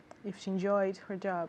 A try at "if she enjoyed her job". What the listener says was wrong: Exactly. Yes. It's the same thing.